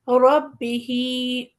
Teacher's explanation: با کے نیچے زیر ہے لیکن ہا کے نیچے کھڑا زیر ہے تو ہم ہا کو تھوڑا زیادہ کھینچیں گے